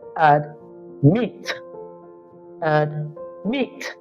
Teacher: the stress lies on the second syllable